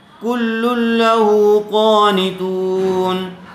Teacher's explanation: پیش والے حرف کے بعد واو ساکن آیا ہوا ہے, اس لیے یہاں پر واو مدہ ہوگا اور اس کو تھوڑا کھینچ کر پڑھیں گے